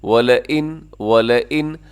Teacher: اسے اپنے وَلَئِن نہیں پڑھنا، یعنی لام کو لمبا نہ کیجیے گا کیونکہ لام کے اوپر صرف زبر ہے۔ زبر زیر پیش والے حرف کو کبھی بھی لمبا نہیں کیا جاتا، کھینچا نہیں جاتا۔